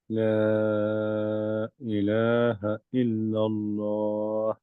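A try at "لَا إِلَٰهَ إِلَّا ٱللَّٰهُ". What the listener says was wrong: আরেকটু বাড়বে ভাই কারণ ওই যে মাদ আরিদ লিন সুকুন তো সো এই 4 দিবেন আর কি এতটুকু লম্বা এখানে ইল্লাল্লাহ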